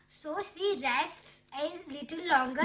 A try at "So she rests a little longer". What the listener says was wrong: No, clearly padhiye. Hey, nahi. No, it is not hey. A.